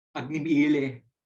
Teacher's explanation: Like the first word of the Rig Veda, Agni Ile, it has the retroflex la.